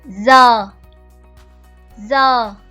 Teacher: we have a vowel, and we have a down tone. So the point here is down the voice gradually. Very important, gradually.